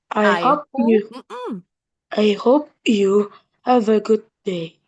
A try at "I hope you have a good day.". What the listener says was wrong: Dikit lagi, good day-nya jangan dipisah.